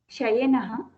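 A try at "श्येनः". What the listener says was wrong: no, see, Shakara is half there. There is no bar. Shienaha, Shienaha.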